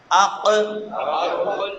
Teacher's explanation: اق، کراچی والا کاف ہے اق اور یہ ہے اق. زبان جھٹکے کے ساتھ پیچھے سے تالو کے ساتھ ٹکراتی ہے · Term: قاف